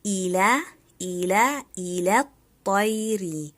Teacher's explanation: The lam in ila is light and the heavy ta in al-tayr.